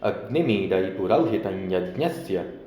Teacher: म का अनुस्वार बन जाएगा